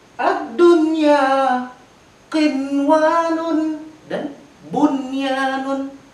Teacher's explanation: Ada nun mati, setelahnya huruf wa, huruf idgham bigunah yang seharusnya sinwanun, tapi dibaca tidak dengan dengungan. Sinwanun harus dibaca tanpa dengungan.